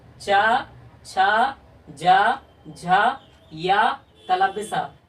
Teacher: चा, छा, जा, झा, या, तालव्य सा का उच्चारण स्थान तालु है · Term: तालव्य वर्ण